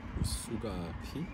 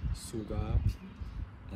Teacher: it's not aspirated, it's between a k and a g